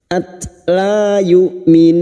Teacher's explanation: Tak sukun memiliki sifat hamas dan syiddah